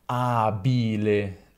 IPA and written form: ˈabile (abile)